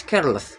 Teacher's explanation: The stress is on the first syllable care and the last does not shift stress. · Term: stress preserving suffix